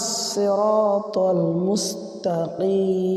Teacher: মাদ্দে আরজি তিন আলিফ টানিয়া পড়িতে হয়